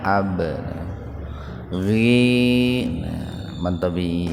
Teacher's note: Nah, qalqalah sugra. Huruf ba yang sukun di tengah-tengah kalimat ya. Tengah-tengah kata. Pantulkan tapi ringan Pak.